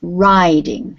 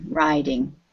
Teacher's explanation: Very long sound for the I, riding